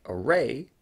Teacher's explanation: a word like array, which uses the comma vowel followed by er, would also be a form 2 vowel, that places it in the same position as the letter vowel.